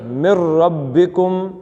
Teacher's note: اب من میں نون نہیں ہے را ہے